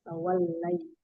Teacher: Lamnya itu bersifat istifal. Hanya nempel sebagian maksudnya.